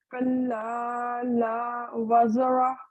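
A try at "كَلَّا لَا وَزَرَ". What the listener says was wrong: وقف کا ہے، وقف کا رول ہے، وزارہ نہیں. کلا لا وزر، را پر جو فتح ہے تو جزم لگے گی نا.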